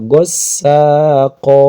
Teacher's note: Ini bukan gossaqon ya, tapi dibaca gossaqo panjang namanya mad iiwad.